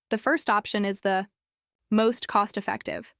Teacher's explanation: That stress on first tells everyone to focus on that one.